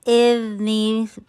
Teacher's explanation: پھر اذنی, ذا ٹپ آپ کی زبان کی نوک آپ کے سامنے والے دو دانت کے ایج پہ لگ رہی ہے. اذنی, سی ٹی کی آواز نہیں ہے, اس میں صفیر کی کوالٹی نہیں ہے